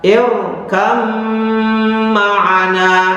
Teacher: Berikutnya yang dibaca dengung yang lama atau ditahan adalah ketika ba sukun bertemu mim. Contohnya irkab ma'ana dibaca irkam ma'ana. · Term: idgham mutajannisah